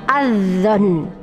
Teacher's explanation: Ada lam ta'rif atau alif lam bertemu dengan dha, ya, sehingga dimasukkan dulu adzon, bukan dibaca al-dzon. Alnya tidak terbaca karena harus idgham, dimasukkan langsung adzon. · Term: idgham syamsiah